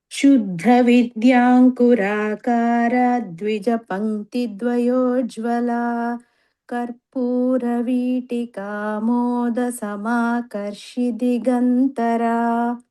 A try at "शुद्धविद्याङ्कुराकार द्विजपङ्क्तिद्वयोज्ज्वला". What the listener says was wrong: The first line, Shuddha Vidyankuraakara Dvija Pankti Dvayojjvala. This Ra should not be prolonged. It is a Hrasva. So you should take the next letter immediately after the Ra.